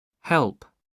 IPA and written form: hɛlp (help)